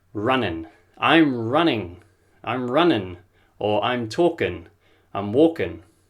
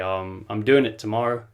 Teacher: a lot of people will drop the G, so it will sound like running.